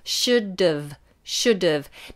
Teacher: You have to make sure you get that D and then the strong V. Vibration with the bottom lip, remember.